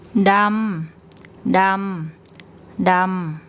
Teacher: So we have a mid-class initial consonant, and it's a live syllable, so we get a mid-tone.